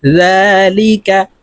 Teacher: মিম বাদি জাল খাড়া জবর জালের উপরে খাড়া জবর আছে তাই এই জালকে এক আলিফ টেনে পড়তে হবে